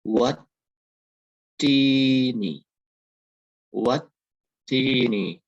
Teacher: Huruf ta itu ada tanda baca tasdid berharokat kasroh. Jadi ditekan dan tahan dua harokat.